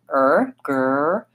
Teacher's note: And then that helps me make a difference between the R in the back of my mouth